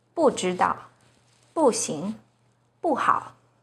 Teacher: When 不 is followed by a non-4th tone, which are the 1st, 2nd, and 3rd tones, it's pronounced as the 4th tone